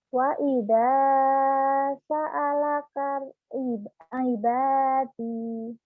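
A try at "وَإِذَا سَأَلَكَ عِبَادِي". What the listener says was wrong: Kurang tenang. Jangan buru-buru. Ulang.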